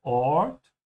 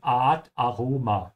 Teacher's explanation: In German, it's more of an open a